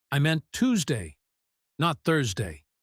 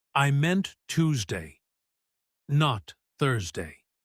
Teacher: The words Tuesday and Thursday would be strongly stressed here since the whole point of the sentence is highlighting that specific contrast. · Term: contrastive stress